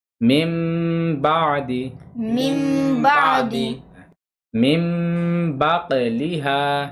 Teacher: نون کو میم سے بدل دینا ہے، یعنی نون کی جگہ میم پڑھا جائے گا. ہاں میم پڑھا جائے گا. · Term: اقلاب